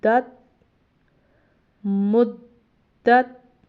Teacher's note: یہاں پہ دال بھی ہم نے قلقلہ کیا، مگر پھر دال پڑی زبر تا ساکن دت، تا کو ہم ساکن کر رہے ہیں، اس لیے ہم اس کو ہلا کے نہیں پڑھیں گے کیونکہ یہ حروف قلقلہ میں سے نہیں ہے۔